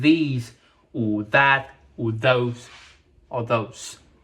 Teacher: We don't really blow out anything, but we will vibrate a little bit with the tongue. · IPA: ð